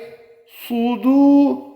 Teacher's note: صاد کو پر کر کے پڑھیں گے، ہونٹوں کو گول کر کے۔